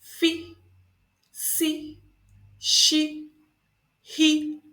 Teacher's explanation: these are produced with a partial obstruction of air flow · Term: fricative consonants